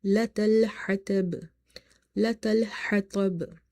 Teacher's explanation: Ha is from the middle of the throat as it's from the halkiya letters.